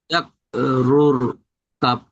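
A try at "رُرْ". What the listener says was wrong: রু রু বললে তো ভুল হবে, কারণ এখানে রর উপরে একটা পেশ আছে, একটা র সাকির আছে। র র পেশ রুর।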